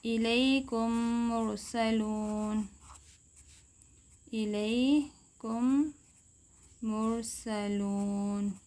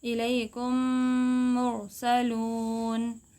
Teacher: غنہ بھی کریں گے اور آواز کو ناک میں لے کر جائیں گے، غنہ کریں گے اور ادغام کریں گے، ادغام غنہ کے ساتھ، الیکم مرسلون۔